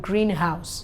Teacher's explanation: stress is given on the first part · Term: compound nouns